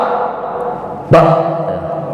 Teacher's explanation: Yang pertama, dari segi makhraj atau tempat keluarnya, huruf ba ini berada di bibir. Bibir atas dan bibir bawah ditemukan, maka jadilah huruf ba.